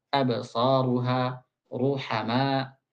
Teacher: apabila ra itu berharakat dhammah, absaruha, ruhama harus ditebalkan. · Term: tafkhimur ra